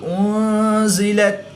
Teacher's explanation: نون ساکن کے بعد زا حروف اخفا میں سے ہے تو یہاں پر اخفا ہوگا یعنی غنہ زمانی کر کے پڑھیں گے۔